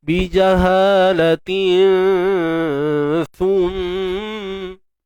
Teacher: ikhfa hakiki nipis je. Sebab jumpa sa. Untuk sa tu pula sendiri, kita kena keluarkan hujung lidah kita.